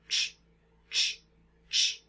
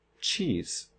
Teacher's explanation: So this is the t and sh sound at the same time, and we get ch.